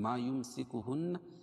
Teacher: یمسکہن نون مشدد ہے، اس میں غنہ ہوگا